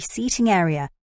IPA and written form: ˈsiːtɪŋ ˈeərɪə (seating area)